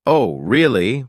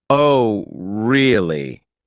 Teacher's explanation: For instance, if someone says, "Oh, really?" with a high, surprised tone, they're genuinely interested or shocked. But if they say, "Oh, really?" with a flat tone, they might be skeptical or even a bit sarcastic.